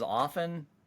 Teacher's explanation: The T is usually dropped in American English